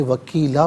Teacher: وکیلاً وقف کی صورت میں وکیلا پڑھیں گے۔ دو زبر کی تنوین وقف میں الف سے چینج ہو جاتی ہے